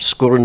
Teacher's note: skúr has a long U normally, but when you put in the glide vowel between the two consonants after it, it becomes short